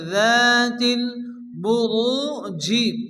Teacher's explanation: এখানে জিম সাকিন হবে, জিম যেহেতু কলকার অক্ষর হালকা ধাক্কা দিয়ে পড়তে হবে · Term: কলকলা